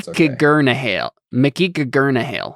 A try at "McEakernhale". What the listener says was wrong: Stop adding the second G. There's only one.